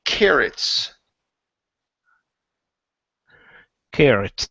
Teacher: it's just like one R. We don't pronounce a rolled R or anything like that.